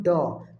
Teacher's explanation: এটি অল্পপ্রাণ বর্ণ বাতাসের চাপ কম থাকবে